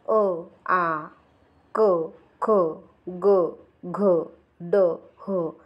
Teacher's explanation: कंठ वर्ण म्हणजेच अ आ क ख ग घ ड ह याचा उच्चार कंठातून होतो